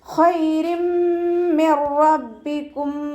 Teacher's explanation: തെൻവീനിന് ശേഷം ഇദാം ബിഗുന്നയുടെ അക്ഷരമായിട്ടുള്ള മീമ് വന്നു. തെൻവീനിലുള്ള നൂനിൻ്റെ സൗണ്ടിനെ നമ്മൾ മീമിലേക്ക് ലയിപ്പിച്ച് ഉന്നയോടുകൂടി ഓതി കൊടുക്കുക